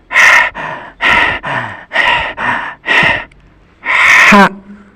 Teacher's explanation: Pengucapannya seperti suara pernafasan. Suara bersih dan terdengar nyaring, seperti orang yang sedang kecapean.